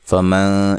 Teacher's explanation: یہاں نون ساکن کا اخفا مع الغنہ ہے، باریک اخفا ہے